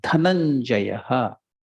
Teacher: Dha is Mahaprana. You are using more prana.